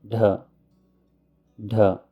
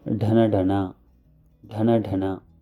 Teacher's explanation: This is the aspirated dha sound.